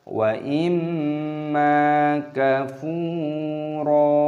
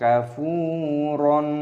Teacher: Di sini ada fathah tanwin, ada tanda alif, di sini ada tanda berhenti, waqaf, jadi dibaca sebagai mad iwad. Cara membacanya adalah wa imma kafuro.